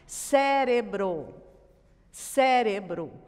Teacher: A sílaba tônica é o sé. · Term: proparoxítona